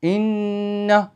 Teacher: നമ്മളുടെ നാവ് സ്റ്റക് ആയിരിക്കും മൂക്കിലൂടെ ശബ്ദം വരുള്ളൂ